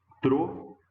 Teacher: A mesma coisa, por exemplo, a palavra troféu. Também, ó, uma oxítona terminada em um ditongo aberto